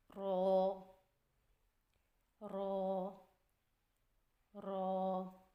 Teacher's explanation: را کی ادائیگی میں زبان کی نوک کی پشت کو اوپر والے دانتوں کے مسوڑوں سے لگا کر موٹی آواز میں پڑھیں.